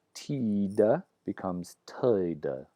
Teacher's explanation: That's a schwa plus an I as a kind of diphthong.